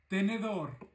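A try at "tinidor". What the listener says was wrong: Мы говорим тинидор, а не тенидор. Тинидор.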